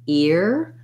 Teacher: it has the ear diphthong. So you have a tense E sound gliding into your American R